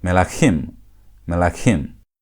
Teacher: The first syllable has reduced from segol to shva. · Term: pretonic reduction